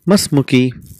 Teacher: Because it is hamzatul wasl, we don't pronounce the sound. That becomes masmuki.